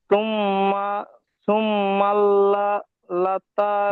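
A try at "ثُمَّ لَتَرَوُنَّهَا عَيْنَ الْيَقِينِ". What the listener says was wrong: তুম্মাল হচ্ছে কেন? সুম্মা আলাদা হবে।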